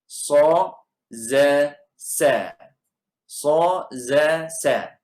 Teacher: ujung lidah kita akan duduk di belakang gigi siri, ujung gigi siri bawah. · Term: huruf safir